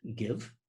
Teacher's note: We're stopping the sound by holding the back of our tongues up against the soft palate or the velum. · You're using your voice, we're using our voice. It's a plosive, we stop the air and then it explodes. So it's a voiced plosive. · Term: velar voiced plosive